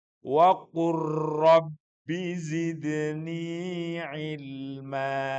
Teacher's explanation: Saya jelaskan dulu waqul kan asalnya waqul lalu ketemu ro. Wa dihilangkan lamnya masuk kepada ro. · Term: idgham mutaqorbain